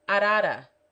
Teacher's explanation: it is pronounced by striking the tongue lightly against the roof of the mouth almost as if pronouncing the letter d